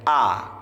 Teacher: a keluar dari tengah tenggorokan paling bawah ya